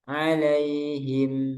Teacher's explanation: ada aliran di mim terakhir di sukun him